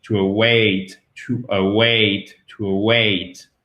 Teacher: le stress, c'est-à-dire l'accent tonique est sur la seconde syllabe. Et en plus, on a vraiment aussi là une diphtongue et une diphtongue qui est forte.